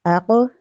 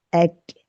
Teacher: آگے ہم بڑھتے ہیں، جو حروف ہمیں ملتے ہیں مکس آواز والے وہ ہیں قوف اور کاف۔ اب قوف کی آواز موٹی اور جھٹکے والی ہے، لیکن کاف کی آواز باریک ہے اور اس میں جھٹکا نہیں ہے